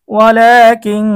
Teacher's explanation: নুন সাকিনের পরে ইকফার হরফ কাফ এসেছে গুন্না সহ পড়তে হবে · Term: ইকফার গুন্না